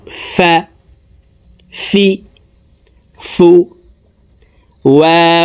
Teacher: ফার উচ্চারণ উপরের দাত নিচের ঠোটের পেটের সঙ্গে লাগিয়ে দ্রুতভাবে উচ্চারণ করব ফি ফু ও জবর ওয়া দুই ঠোট গোল